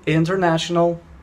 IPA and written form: ˌɪntərˈnæʃənəl (International)